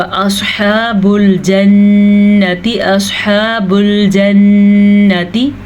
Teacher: गुन्ना आपने यहाँ पे करना है क्योंकि नून पे शद है